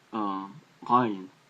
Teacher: Ayin in modern Hebrew is pronounced similar to Aleph, but in ancient Hebrew it was probably pronounced more similar to the Arabic, which is ayin, sort of like you're going from the very deepness of your throat